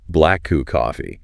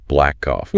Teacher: instead of saying the sound twice, which is kind of clunky, you often just hold it a tiny bit longer or just say it once connecting the two words. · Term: consonant to consonant linking